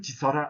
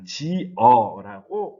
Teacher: 원래 있었던 시옷이 탈락합니다. 즉 시옷 불규칙 활용을 할 때 이 탈락이라고 하는 것이 나타난다고 할 수 있겠습니다.